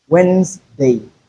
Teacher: Wednesday the Z sound instead of S.